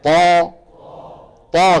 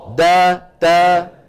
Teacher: كيف صارت طا هي تا لكن ارتفع اقصى اللسان ورجع لسان المزمار شايفين لسان المزمار كيف راجع واقصى اللسان مرتفع بخلاف هنا لاحظ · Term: استعلاء اقصى اللسان